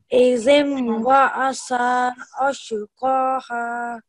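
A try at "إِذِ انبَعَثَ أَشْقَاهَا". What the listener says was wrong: So you really just need to make sure that this dhal sound is coming from your tongue touching your front two teeth, izim, and this tha sound, again, there shouldn't be a s sound here, it should be tha.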